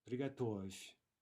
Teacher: that final soft v is reduced to a soft f